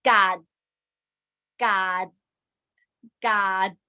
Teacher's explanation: you close your throat and you close your nose and that make the sound stop